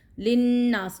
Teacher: یہاں پہ غنہ ہو رہا ہے نون کی وجہ سے، نون مشدد کی وجہ سے